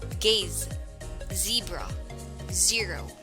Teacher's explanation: the vocal cords are vibrated to create sound, making the Z sound